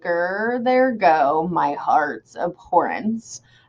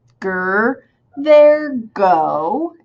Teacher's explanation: I would kind of raise up when I say there go, and so I have unstressed, stressed. Okay, and then I would kind of raise up again.